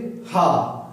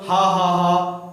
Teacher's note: हा किससे बोला जाता है, कंठ से भी बोला जाता है। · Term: काकल्य व्यंजन